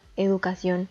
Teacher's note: está dividida en cuatro sílabas la sílaba tónica recae en la última sílaba